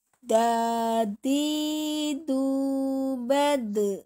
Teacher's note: Selanjutnya adalah yang terakhir di sini adalah huruf dal. Dal makhrajnya di punggung ujung lidah mengenai gigi gusi atas.